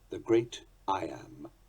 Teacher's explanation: a rising rhythm foot with a tit-tum beat like those above is an iambus, more usually called an iamb, spelled I-A-M-B.